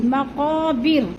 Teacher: مقا کی جو قاف ہے، قاف کو ہم نے تھوڑا سا کھینچنا ہے کیونکہ ادھر الف مدہ ہے۔